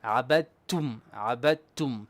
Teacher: When we have a dal before a ta, the dal goes silent. We don't pronounce it at all. So we go directly to the ta.